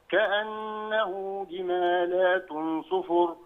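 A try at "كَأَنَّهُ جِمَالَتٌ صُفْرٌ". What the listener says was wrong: جمالة صفر. مفيش ألف لام، يعني مفيش بعد اللام ألف عشان نقول جمالات، لكن هي جمالة صفر.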